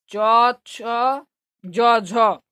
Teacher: च छ ज झ यह तालू से निकलता है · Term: तलव्य वर्ण